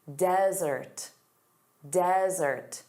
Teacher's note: notice the syllable stress is on the first sound, da da, desert